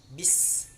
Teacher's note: Bis ada hamesnya, ada anginnya.